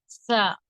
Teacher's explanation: தமிழ் தம்பி தலை என்பதில் உள்ள தா வைப் போன்று உச்சரிக்க வேண்டும் ச நாவின் நுனி மேல் நடுப்பற்களின் விடும்பை தொட்டும் தொடாமலும் இருக்கும் நிலையில் முன்பற்களுக்கு இடையில் காற்றை வெளிப்படுத்தும் போது உண்டாகிறது